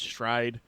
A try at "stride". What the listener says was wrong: Did you say it's stride? It sounded like you said shride.